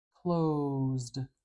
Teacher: you stretch out that vowel sound a little bit like an accordion